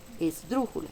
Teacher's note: las palabras esdrújulas son aquellas que llevan el mayor golpe de voz en la antepenúltima